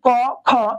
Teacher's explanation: খতে বাতাসের চাপ বেশি তাই হচ্ছে মহাপ্রাণ